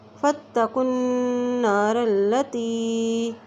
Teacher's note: فا کو تا سے ملا رہے ہیں کیونکہ تا کے اوپر شد ہے